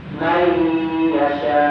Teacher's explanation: Contoh may yasha ujungnya ada hamzah harus ditekan lebih.